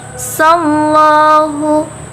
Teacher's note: lafaz Allah itu dibaca secara tafkim karena lafaz Allahnya atau lan dalalahnya itu didahului oleh huruf yang berbaris fathah, yaitu di huruf sin.